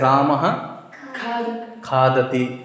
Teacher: जीभ के मूल से इस जीवा मूली का उच्चारण होता है